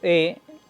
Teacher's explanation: La E es media, porque digo E, la boca no se abre tanto ni se cierra tanto. Y la posición de la lengua es anterior, digo E, y la lengua se va hacia adelante.